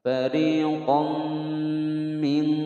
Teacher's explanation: dimasukkan serta didengungkan selama 2 ketukan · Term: bi gunnah